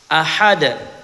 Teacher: Huruf dal di sini dibaca qalqalah wust